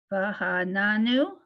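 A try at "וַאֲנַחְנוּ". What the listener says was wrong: Close. Va'ananu. It's a chet. It's an aleph, so it's just va'a. Va'anachnu.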